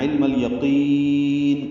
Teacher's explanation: قوف کو موٹا کریں گے، یا کو نرمی سے پڑھیں گے اور نون کو ساکن کریں گے. اور یاد رکھیے یہاں پہ نون کے نیچے زیر ہے، علم الیقینی ہے. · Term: اظہار قمری